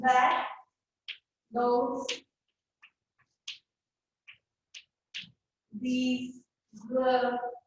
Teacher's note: So then we have the voice dental fricative. So as in that, those, these, the.